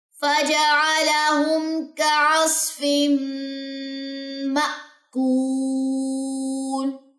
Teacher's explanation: یہاں پہ غنہ اور غنے کے بعد حمزہ جزم جو ہے وہ جھٹکا لیتا ہے، تو اس جھٹکے کو آپ نے کھا نہیں جانا، اس کو پراپر آپ نے جو ہے وہ ادا کرنا ہے.